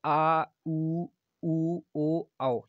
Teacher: पश्च स्वर आपके आ, उ, ओ, औ, ये आपके पीछे वाले जीभ के पिछले भाग से बोले जाते हैं, ये आपके पश्च स्वर होंगे